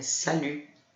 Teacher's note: E o T final a gente não vai pronunciar.